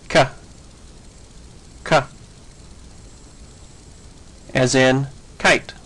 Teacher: An unvoiced velar consonant sounds like this.